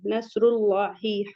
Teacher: نصر اللہ، فتح مستقیمہ لام پہ مد حکمی 2 کاؤنٹ الانگیٹ کریں گے۔ نصر اللہ، ہا حلقی سے ہے، سمپل پڑھیں گے · تو صاد کو ہیوی پڑھیں گے، را کو بھی ہیوی پڑھیں گے کیونکہ را پر ضمہ ہے، پیش ہے، تو را پر جب زبر یا پیش ہو تو ہیوی پڑھتے ہیں۔ · لام جلالہ کو بھی ہیوی پڑھیں گے کیونکہ اس سے پہلے ضمہ آ رہا ہے